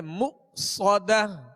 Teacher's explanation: یہاں حمزہ ساکن ہے, اس کو جھٹکے سے ادا کریں گے مؤصدہ. صاد کو سیٹی کی آواز میں اور پر پڑھیں گے مؤصدہ.